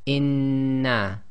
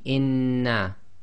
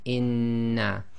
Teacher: we've got to effectively merge the two noons together and hold it for a little bit. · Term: gemination